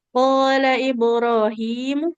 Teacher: mimnya enggak boleh panjang karena domah tidak bertemu dengan wau.